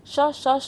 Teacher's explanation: आपका जो श है आपका तालु के द्वारा है